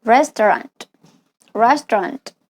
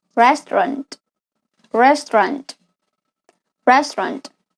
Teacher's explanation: The A-U is often unpronounced, but you link directly from the T to the R.